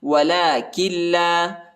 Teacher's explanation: لام پر کھڑا آیا ہے، اس کو تقریباً 1 الف کی مقدار تک کھینچنا ہے۔